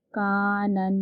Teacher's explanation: یہاں پر ہم گننا کریں گے کیونکہ نون پر تشدید موجود ہے